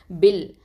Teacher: நடுவில் உள்ள ஹம்சத்துல் வசலை நம்ம ட்ரா பண்ணிடுவோம், உச்சரிக்க மாட்டோம்.